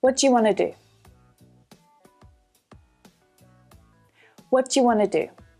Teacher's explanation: can you hear the intonation at the end of that question? It goes down.